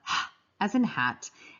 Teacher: the glottal sound is where the vocal folds are involved, and it's way back in your throat